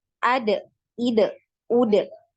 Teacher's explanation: huruf dal ini makhrajnya di punggung ya. Punggung lidah pada posisi dua gigi seri atas. Kemudian untuk huruf dal ini tidak punya aliran nafas ya, tidak ada aliran nafasnya jadi tertahan ya nafasnya. · untuk huruf dal ini tidak punya aliran nafas ya, tidak ada aliran nafasnya jadi tertahan ya nafasnya. Kemudian juga tidak punya aliran suara.